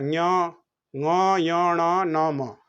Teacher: अनुनासिक जिसका उच्चारण मुख और अनुनासिका से होता है, दांत माने नाक से, उसका ञ ङ य ण न म।